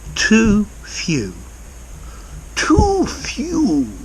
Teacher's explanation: ooh sounds become much longer